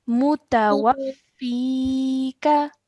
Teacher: make sure you're stretching the fi sound out for 2 seconds